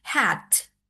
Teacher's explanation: The T become unaspirated And at the end of the word, English speaker speak usually like release the T, so hat should end with a clear burst